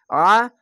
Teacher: আইন যাবার আ, আইনটিকে মোটা করে গলা চিপে পড়বেন